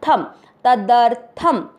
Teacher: और फिर थ पूरा है, थ में मिक्स कीजिए। तदर्थ, शब्द पूरा होने के बाद थ पे अनुस्वार आधा म